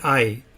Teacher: some people pronounce it I where you kind of articulate both vowels but you're blending them together more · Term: diphthong